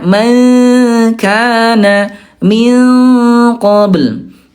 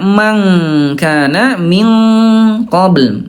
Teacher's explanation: tingkat kesamarannya bunda dia rendah, ya lebih banyak dengungnya